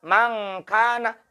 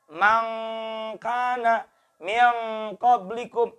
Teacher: Maka ketika membaca mangkana, angnya di sini. Di pangkal lidah. Bukan di depan. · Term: ang asli